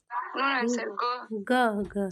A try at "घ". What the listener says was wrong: देखो, जो लोग अभी गलतियां कर रहे हो ना, आप लोग गा और घा में अंतर नहीं कर पा रहे हो, ये आपसे मिस्टेक पक्का एग्जाम में होती है।